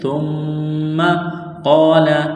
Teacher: قال، قاف کو موٹا کرنا ہے، الف سے پہلے زبر ہے، حروف مدہ الف ہے تو ایک الف کے برابر اس کو کھینچنا ہے